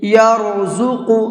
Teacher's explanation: را کو منہ بھر کے پڑھیں گے اور زا کو سختی کے ساتھ میں پڑھیں گے، اور اس کے بعد میں قاف ہے، قاف کو بھی منہ بھر کے پڑھیں گے۔